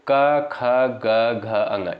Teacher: इनका उच्चारण जो होता है साथियों कंठ से होता है